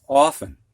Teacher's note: You don't hear that T.